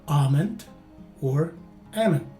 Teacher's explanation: for both variations the stress is in the first syllable and though the letter l is sometimes pronounced by some it is rather silent for most educated speakers